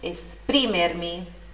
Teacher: Esprimermi, sílaba tônica no pri